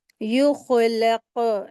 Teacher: खा को हलक से अदा करेंगे, हैवी लेटर है, और क़ाफ़ के ऊपर कलकला कलकला हो रहा है, और ये भी हैवी लेटर है।